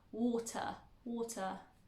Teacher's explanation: A lot of people, when they are learning British English, most of the time, or most accents within the UK, they don't pronounce the R at the end of words